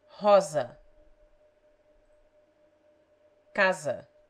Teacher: It has the Z sound when it stands between vowels.